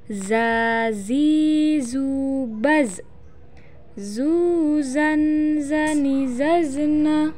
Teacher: huruf dza dikeluarkan dengan ujung lisan kita hampir di atas gigi seri bagian bawah diucapkan dengan mengalir suara tanpa diiringi dengan udara